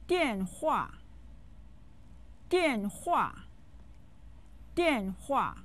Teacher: den hua uses the fourth tone on both syllables